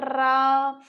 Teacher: जैसे अपन रा को बोलते हैं रा, तो इसे बोलते वक्त कंपन होता है, इसलिए इसे प्रकंपित व्यंजन कहते हैं।